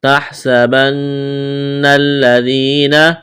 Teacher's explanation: تحسبن الذین، سین میں سی ڈی کی آواز پیدا کریں گے، سین کو باریک کرنا ہے۔ نون مشدد پر غنہ کریں گے، آواز ناک میں چھپائیں گے۔ نون کو لام کے ساتھ ملانا ہے، لام میں سختی کریں گے۔